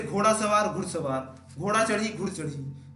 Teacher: हस्वीकरण आदि हस्व, इसमें संधि के कारण पहला दीर्घ स्वर हस्व हो जाता है।